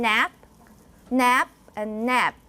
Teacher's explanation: you don't release the final stop so it makes it harder for you to tell whether it's a p or B whether it's a voiced or voiceless consonant and then you can